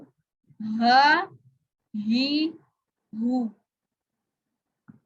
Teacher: हलक के सबसे निचले वाले हिस्से से पढ़ा जा रहा है। ये मखरज नंबर 1 है, हमजा और हा का मखरज, और असूले मखारिज के लिहाज से ये अलहलक का मखरज है।